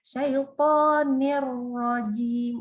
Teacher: Pasyaitonir ro. Kan kalau ni kan bacanya sebenarnya tipis saja ni. Tapi karena ro itu tebal, bacanya jadi dengungnya tebal ya.